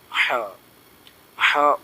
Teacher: ہا یہ حلق کے درمیانی حصے سے نکلتا ہے · ہمارے سینے کی طرف سے، گلے سے ہو کر آتی ہے، اس کو تھوڑا سا باریک ہونا چاہیے۔ یہ ہم نکالتے ہیں، جیسے ہا اس طریقے سے نکلتا ہے، تھوڑا سا ہمارا زور تو لگے گا اور محنت بھی لگے گی، اس کے بعد یہ ہا ٹھیک ہوگا۔